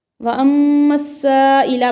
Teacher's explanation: यहाँ पर गुन्ना करेंगे मीम मुशद्दद पर क्योंकि जब भी मीम मुशद्दद और नून मुशद्दद आते हैं तो वहाँ गुन्ना करते हैं।